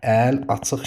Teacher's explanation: Əl açıq sözündə əl açıq şəklində tələffüz edəcəyik. Həm əl açıq sözündə səs düşümü var. Burda i düşəcək. həm də q əvəzlənməsi baş veribdir.